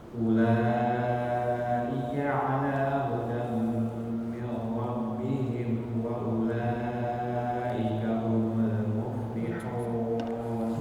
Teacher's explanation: Tadi hudam min rabbihim kurang ditahan gunnahnya.